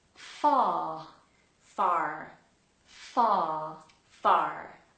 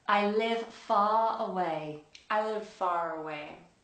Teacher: we have to flatten the R, and in most cases we ignore it altogether if it's not at the beginning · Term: R sound